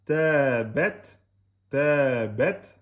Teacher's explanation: On laisse souffler, sortir le petit souffle. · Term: ta soukoun